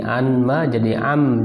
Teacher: Amma itu ya, summa udghimatin nunu fil mim ya, kemudian diidghamkan, nun diidghamkan pada mim, jadi an ma jadi am diidghamkan. Wa udhifatil alif ma ya, dan alifnya dibuang.